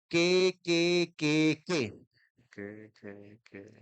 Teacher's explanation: La parte de atrás de la lengua, que se le conoce como dorsal de la lengua, toca el paladar blando, porque tenemos dos paladares, duro y blando.